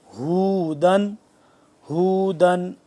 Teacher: ہودن، ہودن ہوا پیش ہو، یہ ہے ہا چشمے والی ہے، یہ ہوتی ہے حلق کے آخری حصے سے اور سینے کے پاس سے